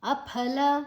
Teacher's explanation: ಫ ಮಹಾಪ್ರಾಣ ಫೋರ್ಸ್ ಆಗಿ ಹೇಳಬೇಕು